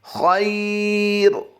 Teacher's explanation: اور وقف کی حالت میں را کو ہم نے باریک کرنا ہے